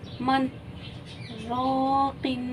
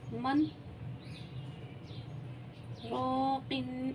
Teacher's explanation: یہاں پہ ہم سکتہ ایسے کریں گے کہ سانس جاری رہے گی، آواز رک جائے گی۔ ٹھیک ہے جی، سانس جاری رہے گی، آواز رک جائے گی۔